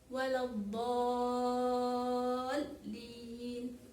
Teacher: huruf do itu keluarnya dari pinggir lidah yang kiri maupun yang kanan ataupun keduanya. Jadi memang dalam melafalkan huruf do ini agak susah.